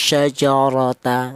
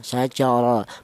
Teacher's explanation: cara menebalkan huruf ra yang berharakat fathah ini menggunakan lidah bagian belakang ya diangkat ke atas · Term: tafkhim